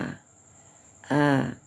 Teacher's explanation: a jangan sampai berbang jadi a. Tidak boleh dibawa ke hidung ya. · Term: alif